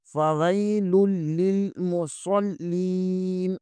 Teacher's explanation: صاد کو موٹا پڑھیں گے، اور صاد بھی حروف صفیریہ میں سے ہیں، یہاں بھی سیٹی کی آواز نکلنی چاہیے ، فویل للمصلین، صاد کو لام کے ساتھ ملائیں گے، اور